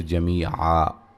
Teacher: وقفاً الف مدہ میں تبدیل کر دیں گے